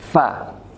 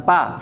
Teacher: Bibir bawah bertemu dengan gigi seri atas. Fa. Bukan pa, fa.